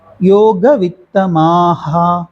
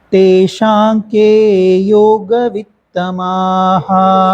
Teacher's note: மா ஹா நெடில் அப்படிங்கிறதுனால மா ஹா அப்படிதான் சொல்லணும். யோக வித்தமாஹா இப்படிதான் சொல்லணும்.